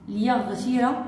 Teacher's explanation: ليغفر عندنا راء مرققة لأنها مسبوقة بكسر لازم